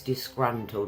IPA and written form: dɪsˈgrʌn.təld (disgruntled)